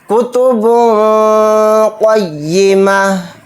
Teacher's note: جو نون کی آواز اینڈ میں آ رہی ہے لاسٹ میں، اس میں اخفا کر کے پڑھیں گے